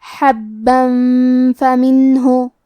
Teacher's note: وَأَخْرَجْنَا، کلمت حبن میں با پہ تشدید ہے تو ہم دو حرف کے برابر با کو پڑھیں گے، اور کیونکہ اس پہ تنوین زبر ہے پھر حرف الفاء آتا ہے کلمت فمنہ، فا حروف الاخفاء میں سے ہے تو ہم یہ حکم کو غنہ کے ساتھ ادا کریں گے